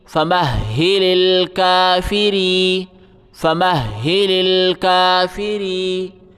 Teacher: را کو یا کے ساتھ ملائیں، یا کے اوپر جزم ہے، را باریک پڑھا جائے گا، را کے نیچے زیر ہے. را یا زیر ری، فمہل الکافری، فمہل الکافری.